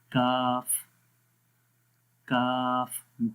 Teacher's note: کا، دیکھیں زبان کی جڑ اوپر تالو کے سخت حصے میں لگ رہی ہے اور باریک پڑھنا ہے